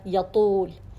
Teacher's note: اب پیش کے ساتھ درجہ تیسرا آتا ہے تفخیم کا